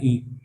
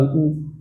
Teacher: इनको जब भी बोलो तो पूरा मुंह नहीं खुलेगा। लगभग ऐसा लगता है कि मुंह बंद ही रहता है। जैसे कि इ देखो मुंह बंद है डब्बा जैसा और बोल रहे हैं इ। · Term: क्लोज